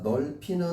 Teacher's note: 받침에 리을은 살아남아 있네요. 그 다음에 비읍하고 히읗이 만나서 피읍이 된 거니까 요거는 뭐야? 거센 소리가 바로 그냥 일어난 거죠.